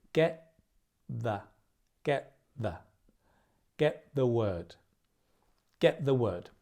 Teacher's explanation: Pronunciation is similar in that get ends in a t, the begins with a the. The tongue is in a very similar place. So we don't say get the, we say get the, get the, get the word, get the word, get the word out, and link, right?